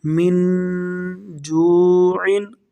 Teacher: ان حروف میں سے جیم نہیں ہے تو یہاں پر ہم اخفا کریں گے، یعنی نون ساکن کو غنّے کے ساتھ پڑھیں گے۔ من، آگے جیم، واو پیش جو، عین، دو زیر عین، جو عین، من جوعن۔